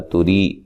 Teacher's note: را کو باریک پڑھنا ہے، یا مدہ ہے